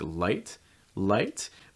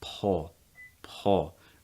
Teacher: difference between like a light l sound and a dark l · for that dark l sound you don't actually need to make contact with the tip of your tongue